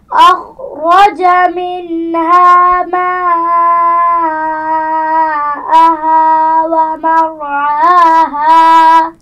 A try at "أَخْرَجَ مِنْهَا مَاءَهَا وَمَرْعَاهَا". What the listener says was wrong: شاباش. ماشاء اللہ.